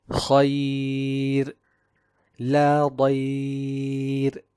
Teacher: the tongue does not concave in the case of the muraqqaq ra, and the sound is easily directed towards the opening of the mouth